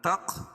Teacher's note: قاف پر قلقلہ. کیوں؟ اس لیے کہ یہ حروف قلقلہ کے 5 حرفوں میں سے ہے، جب ان پر جزم ہو، وقف اور وصل دونوں صورتوں میں یہاں قلقلہ ہوگا.